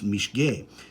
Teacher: the modern French dropped off the S in muscata